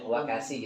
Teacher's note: Kalau shin tengah lidah soalnya. Kalau sin depan masih sama-sama di gigi.